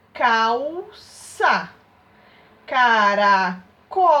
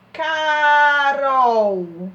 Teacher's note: quando o L está no final de uma sílaba, ele possui som de U